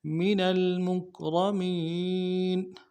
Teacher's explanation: من میں نون کو لام کے ساتھ ملانا ہے